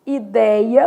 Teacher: Perdeu o assento, mas o som é aberto. · Aberto, som de acento agudo, vou colocar lá, por exemplo, ideia, perdeu o acento, mas o som é aberto.